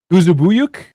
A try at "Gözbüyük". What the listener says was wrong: No, it's they speak a little bit quicker on Turkey. It's something like Gözbüyük. Gözbüyük. But you were close.